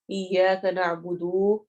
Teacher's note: نعبدو لمبا کر دیا جاتا ہے، واو لگا دی جاتی ہے جو کہ یہاں پر موجود نہیں ہے، نعبدو، بودو لمبا نہیں کرنا۔